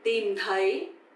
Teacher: So tìm is dấu huyền, you have to go down, and thấy, dấu sắc, you have to go up.